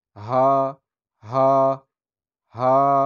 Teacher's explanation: এ হার উচ্চারণ হচ্ছে গলা থেকে, গলার শুরু থেকে। শুরু বলতে বুকের উপরে যেখানে গলা শুরু হয় এখান থেকে হা, হা, হা এরকমভাবে উচ্চারণ করতে হবে। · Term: ছোট হা